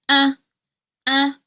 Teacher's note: And then the third syllable is this just the schwah. So it's a lazy vowel sound. Your tongue will be low but your mouth doesn't really open. There's not much movement.